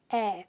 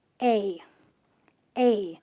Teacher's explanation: this sound is a where your mouth completely opens and the jaw drops to the floor